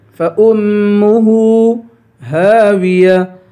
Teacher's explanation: ہا کے بعد الف ہے، الف حروف مدہ ہے، اسے ایک الف کے برابر کھینچ کے پڑھیں گے